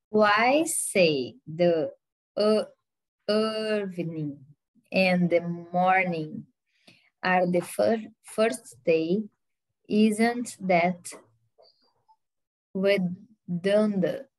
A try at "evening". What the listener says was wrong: The first part of why say, I think you said evening, but it's evening. The evening. Yeah, so the emphasis is at the very beginning.